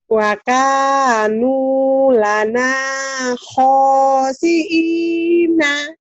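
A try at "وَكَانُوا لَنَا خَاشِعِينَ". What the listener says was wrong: Pokoknya panjang. Sinnya mana anginnya? Shin.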